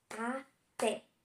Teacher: Até tem 2 sílabas e a sílaba forte é o té, que é a última. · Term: oxítona